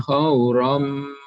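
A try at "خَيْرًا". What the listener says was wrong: Khaira bukan khaw tapi khay, masuk ke huruf ya bukan waw.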